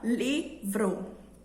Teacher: a minha voz, a minha entonação foi mais para a sílaba li. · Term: sílaba tônica